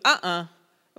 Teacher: then the other thing they have to learn to read is what we call a glottal stop it's where you stop your voice for a second